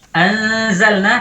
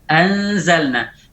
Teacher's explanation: pada saat ikhfa ini posisi lidah sudah pada posisi zai.